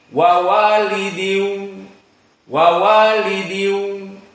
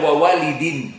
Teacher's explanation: Tidak dibaca nunnya, dimasukkan ke waw menjadi wawalidiu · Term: idgham